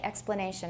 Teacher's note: I usually say explanation. I use a full vowel there. So we give a plus for all the full vowels.